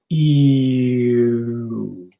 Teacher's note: And this is the thing about English, my lips are going forward. So my tongue goes back, and as I'm doing this, my lips go forward.